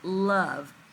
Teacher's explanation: sounds more like a short u sound and not that long o sound